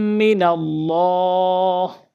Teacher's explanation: আল্লাহ শব্দের ডান পাশে যদি জের থাকে শুধু জের তাহলে আল্লাহ শব্দকে বারিক করে পাতলা করে পড়বো